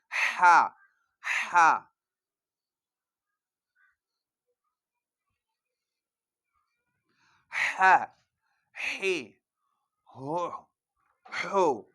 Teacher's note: تو ہا اور عین میں یہی فرق ہے کہ جب آپ ہا ادا کریں گے تو عجیب سیٹی کی آواز آئے گی جیسے ہوا باہر آ رہی ہے